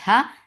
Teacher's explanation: Ha will get sifa of rakhawa because you are giving it sukun because of the waqf. So it will bring rakhawa here.